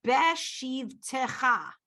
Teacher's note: It's not a full eh on that taf.